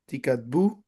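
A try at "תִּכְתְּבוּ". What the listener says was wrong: No, the first one would be silent. It's preceded by a short vowel. Yeah, the second one vocal.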